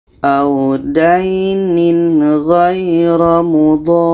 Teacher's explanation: dha ini kita panjangkan 6 harakat baru disambut dengan ra tasydidnya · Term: mat lazim kilmi mutsaqqal